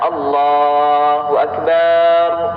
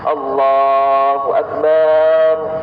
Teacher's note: memanjangkan huruf ba pada kata akbar